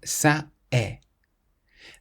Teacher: when you say ça est, you have that slight break in the middle, ça est. This is called a glottal stop, and the French don't like it, ça est.